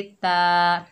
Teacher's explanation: ता के ऊपर ज़बर, आगे अलिफ खाली है, ये अलिफ मद्दा है, एक अलिफ की मिकदार खींच कर पढ़ेंगे